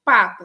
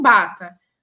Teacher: P e B são oclusivas, né? Bilabiais, uma é surda e uma sonora. Uma treme as cordas vocais e a outra não treme.